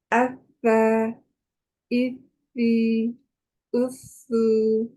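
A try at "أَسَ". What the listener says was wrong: sedikit lagi ya panjangnya. Alirkan harus konsisten alirannya sama ya panjangnya ya. Jangan yang satunya panjang, satunya nggak panjang ya.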